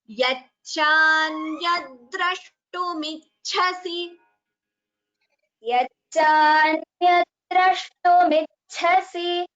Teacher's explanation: si is also a hrasva swara, so please do not prolong it.